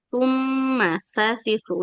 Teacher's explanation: ujung lidahnya ditempelkan ke ujung gigi seri